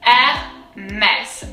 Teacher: the R is very guttural. It comes from deep down.